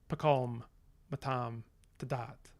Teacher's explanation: you often have very reduced uh vowel contrasts in that that very first part of the syllable. Um often you just get schwa.